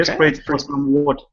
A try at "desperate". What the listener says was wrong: Oh, almost. Go back to a short I sound. Instead of desperate, A, it's sprit. Desperate.